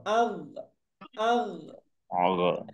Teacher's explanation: গইন এর মধ্যে বাতাস বন্ধ করে ফেলতে হবে, একদম বন্ধ।